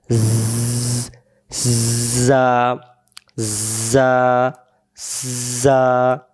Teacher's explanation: জা অক্ষরের সামনের নিচের দাঁতের আগা থেকে শীষ দিয়ে পড়তে হয়